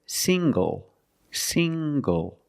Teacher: The ng makes the nasal sound plus the hard g.